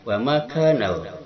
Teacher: Kemudian wama kanal mu'minun, di sini alif lam ada hukumnya. Dia wajib idhar, dibaca jelas lamnya